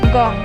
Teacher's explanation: be careful to pronounce the nang as in English sing and not as in English finger, where there is an additional G sound.